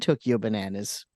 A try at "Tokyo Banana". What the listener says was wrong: It's Tokyo Banana. Even the plural of Tokyo Banana is Tokyo Banana. It's pronounced banana. But the banana part was deadly serious.